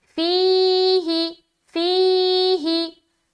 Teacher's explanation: या मद्दा हो रहा है, लिहाजा फी में खींचेंगे और ही को जल्द अदा करेंगे